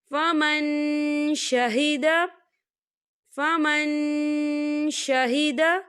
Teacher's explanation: فمن شہد، فمن شہد، دیکھیے فمن یہاں نون ساکن ہے اور نون ساکن کے بعد شین آ رہا ہے، اور شین جو ہے اقفا کا ورڈ ہے، تو ہم یہاں اقفا کریں گے، نون ساکن کی آواز کو ناک میں چھپائیں گے